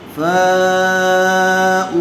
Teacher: فا علمت زبر فا، حمزہ واو پیش او، فاؤ حرف مدہ کے بعد حمزہ اسی کلمے میں آیا ہوا ہے، اس لیے مد متصل کا قاعدہ ہوگا. فا کو کھینچ کر پڑھیں گے اور حمزہ کے اوپر پیش ہے